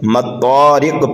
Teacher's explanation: میم کو ہم طا میں ملائیں گے، جیسے کہ والطارق پڑھا تھا یہاں پر مطارق پڑھیں گے۔